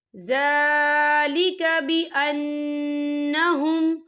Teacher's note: بأنهم یہاں نون مشدد ہے تو یہاں پر غنہ ہوگا